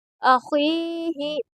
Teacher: خا کو پر پڑھیں گے کیونکہ حروف مستعلیہ کے حرفوں میں سے ہے خا، اور یہاں پر یا مدہ ہوگا کیونکہ یا ساکن سے پہلے خا کے نیچے زیر ہے، اس لیے یہاں پر یا مدہ ہوگا، اور اسی وجہ سے اس کو تھوڑا کھینچ کر پڑھیں گے۔